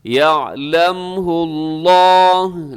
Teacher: لفظ اللہ پر ہے کیونکہ لفظ اللہ سے پہلے ہا کے اوپر پیش ہے